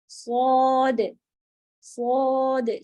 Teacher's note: سیٹی والی آواز دیجیے گا شروع میں